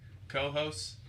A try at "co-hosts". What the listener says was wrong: Well, you have co-host You need to emphasize that last S there, bud.